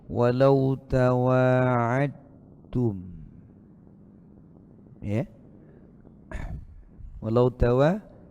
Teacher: makanya dalnya di idghamkan ke ta, dileburkan ke ta.